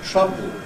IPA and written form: ˈtrʌbɫd (troubled)